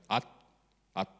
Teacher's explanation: dental stop is basically like a final T in languages that have unreleased T, so it's like at.